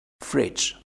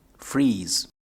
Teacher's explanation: fridge and bridge, they both have a short vowel in the middle. But freeze and breeze have a long vowel in the middle.